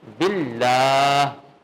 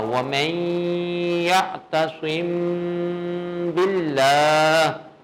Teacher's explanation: اگر ما قبل جو ہے وہ کسرہ ہو، اس کا ما قبل با ہے، یہ مکسور ہے، تو پھر اس کو مرقق ترکیب کے ساتھ باریک پڑھیں گے